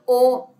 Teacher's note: ओ होठ और कंठ से निकला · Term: कंठ्य ओष्ठ स्वर